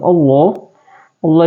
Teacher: Allah dibaca panjang dua harakat ya teman-teman